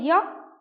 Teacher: हम य बोलते हैं तो मेरा जीभ कहाँ जाता है, मेरा जो निचला दांत है उसके थोड़ा सा नीचे, यानी तालु में पूर्ण रूप से टच नहीं हो पा रहा है, बस ऊपरी से थोड़ा सा य, यानी यहाँ पे पूरा पूरा टच नहीं हो रहा है, थोड़ा सा स्पर्श हो रहा है, तो इसलिए ये पूरा स्पर्श नहीं होता, इसलिए इसको अर्ध स्वर भी कहते हैं